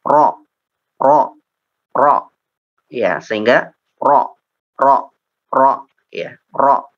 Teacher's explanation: untuk huruf ro ini dia menjadi terfokus kepada ujung lisan, ya, terfokus ke ujung lisan. Karena disitulah ininya sifatnya atau inhirafnya itu ke situ gitu.